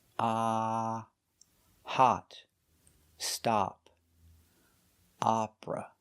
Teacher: It uses the short O like hot and stop. You make the open sound ah. Opera. Opera is the pronunciation for this style of music.